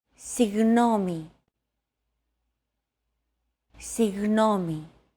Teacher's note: Another approach is to try to pronounce a G as if an H sound were to follow after it and hold that sound while you exhale. The after sound created by that H is what you're looking for. · your tongue and the back part of your mouth should be barely separated from each other while you blow a steady stream of air between the small separation. Another approach is to try to pronounce a G as if an H sound were to follow after it and hold that sound while you exhale.